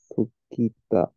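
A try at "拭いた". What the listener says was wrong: Fuita, ita. The K is dropped. Fuita. Fuku. Fuita. For example, kaku means to write. Turns into kaita. So ku turns into ita for past tense.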